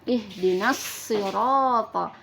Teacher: huruf Shad nah lam alifnya disebut dengan lam alif Syamsiah karena setelahnya huruf Shad termasuk huruf Syamsiah jadi lamnya diidghamkan ke dalam huruf Shad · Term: Idgham Syamsiah